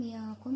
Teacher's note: disebut dengan bacaan ikhfa, dibaca dengan dengung.